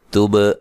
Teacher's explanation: تب با پہ قلقلہ کرنا ہے